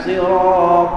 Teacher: sad tu ditebalkan ra juga ditebalkan Ta ditebalkan tetapi lam dinipiskan Sirat ya jangan lam ditebalkan ya jadi lam nipis alladzi ya